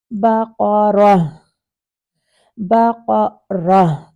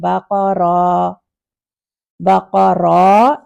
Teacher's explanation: جب رہ کریں تو ہا کی ساؤنڈ آنی چاہیے، نہ کہ الف کی ساؤنڈ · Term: ہا ساکن